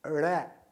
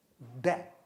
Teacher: जीभ को पीछे तालू से सटाकर आप रगड़ते हुए आगे लाते हैं